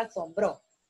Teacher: la sílaba bro es tónica y con tilde